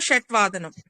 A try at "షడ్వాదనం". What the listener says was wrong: షడ్ డా రావాలండి ఇక్కడ. షడ్ వాదనం. నంబర్స్ లో టా వస్తుంది, ఇక్కడ డా వస్తుంది.